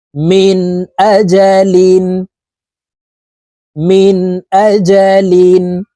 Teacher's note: এই নুন সাকিনকে গুন্না ছাড়া স্পষ্ট করিয়া পড়বো